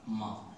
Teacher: यह होठों से निकला है। मा का उच्चारण होंठों से किया जाता है।